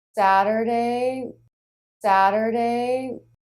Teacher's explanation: Saturday, Saturday, So we switch from the flap right into the schwa R, unstressed syllable of Saturday. So the front of the tongue will flap against the roof of the mouth and then pull right back a little bit to the R. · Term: flap T